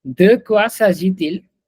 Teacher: we actually use the liaison from T to IL.